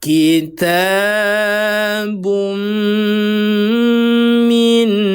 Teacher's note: Kita masukkan suara tanwin ke dalam huruf mim. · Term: idgham bi gunnah